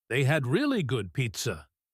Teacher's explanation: the grammar words fade away, and the new information, pizza, gets the spotlight.